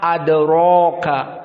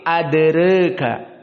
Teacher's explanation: Di sini pun al-imalah as-sughra seperti fujr, maka adere dalam keadaan al-imalah as-sughra ataupun istilah Wars at-taqlil. Maka tidak dibaca fathah adraka, tapi adereka. Maka di sini ra dalam keadaan tarqiq.